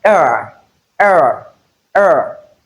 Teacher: the sound makes movement from the mid high front to the central part of the tongue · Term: centering diff thongs